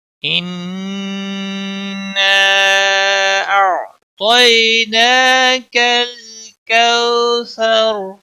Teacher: ان نون مشدد ہے، اس پر گنہ ہوگا۔